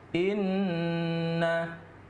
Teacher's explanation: Nun bertasydid itu kalau dalam istilah tajwidnya disebut dengan ghunnah ghunnah itu dibaca berdengung Jadi dua harkat